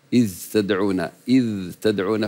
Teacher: كاذ تدعو فهمست الذال فصارت كانها ثا اذ تدعون اذ تدعون فالدال مجهور والتاء بعدها مهموسه